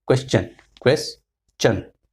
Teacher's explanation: Most of the people say question. They pronounce t, but it is ch.